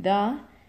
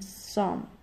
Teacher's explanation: In mid center, we have unstressed schwa as in the, and stressed schwa as in some.